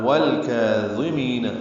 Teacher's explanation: والکاظمین لام ساکن پہ اظہار قمری ہے، کاف باریک ہے، یہ 2 حرکات لمبا کریں گے، وا پر پڑھیں گے، می یا مدہ ہے، 2 حرکات لمبا کریں گے.